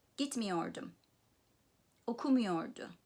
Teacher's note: So the negative, in the negative sentence, the main stress is on the syllable preceding the negative me